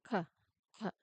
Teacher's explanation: the K sound is made much farther back in your mouth. To produce this sound, you need to lift the back of your tongue, the part closest to your throat, and press it firmly against your soft palate. · the K sound or the K sound is known as a velar plosive. While our previous stops were made with our lips and our tongue tip, the K sound is made much farther back in your mouth. · So, you lift the back of your tongue, okay? Now, um you press it against your soft palate, which is the soft part of the roof of your mouth, located near the back.